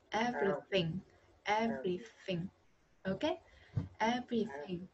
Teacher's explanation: Về luyện tập lại cho cô nhá. Lưỡi đặt giữa hai răng mà chỉ thấy gió đi ra ngoài thôi.